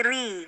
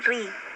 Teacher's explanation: Dan tipiskanlah suara huruf ra bila kasroh ya, berarti ri gitu ya.